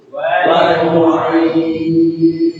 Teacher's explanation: Ini ada ya-nya ini yang panjang. Al-jauf, rongga terbuka, tidak boleh masuk hidung.